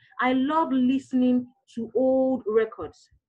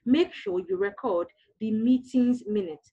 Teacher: The stress is placed on the first syllable when it is used as a noun, but as a verb, it is placed on the second syllable.